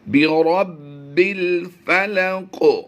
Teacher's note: काफ को हमने हुरूफ मुस्तालिया होने की वजह से पुर करना है, और यहाँ पर ज़ेर है।